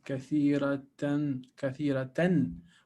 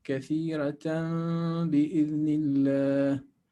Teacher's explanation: Iqlab. So we change the noon of tanween into a meme. Instead of saying kathiratan, kathiratan, we say kathiratan bi'idhnillah.